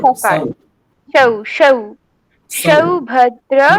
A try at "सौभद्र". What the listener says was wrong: না, সৌ হয়ে যাচ্ছে, আপনার তালব্য হয়ে যাচ্ছে। সৌ বলুন, দন্তস্বই ঔকার সৌ। হচ্ছে না, সকারটা উচ্চারণ হচ্ছে না আপনার।